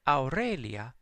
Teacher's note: So you can hear in the restored pronunciation, just about every letter is pronounced with its primitive sound. So AU, even though it's a diphthong, or one sound made out of multiple vowels, you can hear that the A is followed by the U to make the OW sound